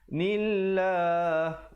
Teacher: lafzul jalalah dibaca nipis di situ kerana datang sebelumnya baris kasrah